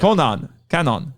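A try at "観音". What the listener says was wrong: The double consonant, you're supposed to hold it a little bit.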